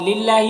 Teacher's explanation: اللہ کے نام کو باریک پڑھیں گے